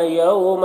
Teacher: یوما میں واو لین ہے، اسے نرم آواز کے ساتھ جلد پڑھنا ہے